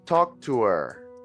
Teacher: when we are speaking fluently we will not pronounce the h in her or him and we will not pronounce the th in them